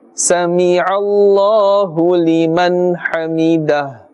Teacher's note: Ism Jalalat has a fatha before it and therefore must be pronounced with a thick tone or a full mouth. Liman hamidah, hamidah, not hamdah, hamidah.